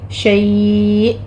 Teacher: شیء حمزہ کو جھٹکے کے ساتھ سٹاپ کرنا ہے